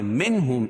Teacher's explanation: منہم اظہار حلقی کیونکہ نون ساکن کے بعد حروف حلقی کے 6 حرفوں میں سے ہا ہے